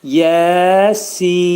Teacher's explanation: Axırdakı nun hərfini izhar edirik və burunda deyirik. · Yə yə hərfi iki səs qədər qaldırılır. Sin hərfi isə dörd əlif miqdarında qaldırılır.